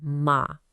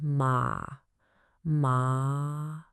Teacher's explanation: The key to this one is that it's high and it's flat. Think of this as our starting point, our baseline. · My voice started high and it just stayed there. No dips, no rises. It's like holding a single note when you're singing. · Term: first tone